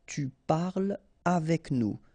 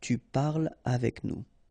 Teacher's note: so no liaison here between parle and avec